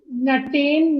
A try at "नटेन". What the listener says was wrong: नटेन नहीं बोलना है, न पूरा, नटेन। बालेन नहीं, न संपूर्ण है। जहां संपूर्ण हो वहां संपूर्ण उच्चारण करना है। बालेन, नटेन।